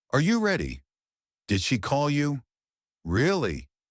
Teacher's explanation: Voice goes up at the end. It sounds like you're expecting an answer. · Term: Rising intonation